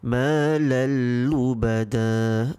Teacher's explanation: we merge it with malal lubada without any prolonged nasal sound